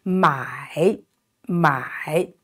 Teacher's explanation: Look at the vowel of this 买 So it's A-I, it's pronounced I.I, here it is a third tone, so down and rising.